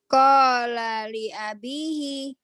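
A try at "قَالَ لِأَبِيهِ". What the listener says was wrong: Ya, tapi B-nya panjang. Qala li abi. Makanya dengan belajar lagu, itu penekanan panjang-panjang.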